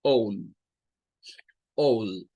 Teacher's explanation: esta tiene un sonido largo realmente, un sonido que apunta a hacer una OU.